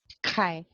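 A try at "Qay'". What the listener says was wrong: little back. little farther.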